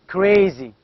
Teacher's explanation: it's a stop sound it is a voiceless stop